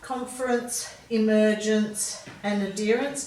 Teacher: ent or ence has a bit of a schwa sound in it